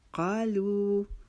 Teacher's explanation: قا کو ہم نے ایک الف کے جتنا لمبا کیا ، لو کو ہم نے ایک الف کے جتنا کھینچنا ہے